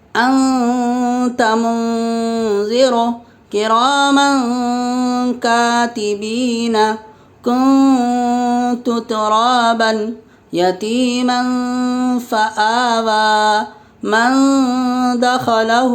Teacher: تنوین یا نون ساکن کے بعد حروف اخفاء آویں تو نون کی آواز کو ناک میں چھپا کر پڑھنا چاہیے، نوک زبان تالو سے ہٹا کر، جیسے اردو میں پنکھا کے نون کو پڑھتے ہیں۔ اخفاء کی مقدار 1 الف ہے، جیسے انت منذر کراما کاتبین، کنت ترابا یتیما فآوی، من دخلہ۔